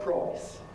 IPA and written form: prɒɪs (price)